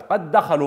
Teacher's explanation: يسقط حكم القلقله لان الحرف يصبح مشددا وليس ساكنا